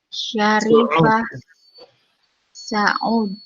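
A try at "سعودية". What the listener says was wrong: Kalau orang Arab biasanya membacanya bukan Saud ya, tapi Saudi. Saudiyah.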